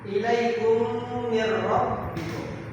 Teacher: Ketika mim mati bertemu dengan huruf mim, itu dibaca berdengung